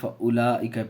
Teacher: واو کو نہیں پڑھیں گے، کھینچیں گے نہیں، فَأُولَئِکَ پڑھیں گے، واو کے اوپر کسی چیز کی حرکت نہیں ہے اس لیے واو کو نہیں پڑھیں گے